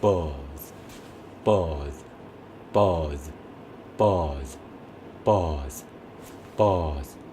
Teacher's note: 바로 앞에 있는 모음은 조금 더 길게 읽고 뒤에 있는 원래 유성음이었던 철자의 호흡은 정말 짧게